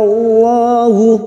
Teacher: lam jalalah yang didahului fathah kita baca tafkim